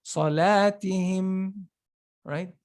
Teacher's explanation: If you say salatihim without any ghunna here, it could be sounded as a ba, because ma and ba come out from the same place. So salatihim, there's a small ghunna.